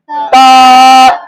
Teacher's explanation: ता जबान की नोक, सामने ऊपर वाले दो दांतों की जड़, सामने ऊपर वाली दो दांतों की जड़।